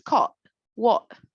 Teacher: You told me the final T is not very strong in the American accent.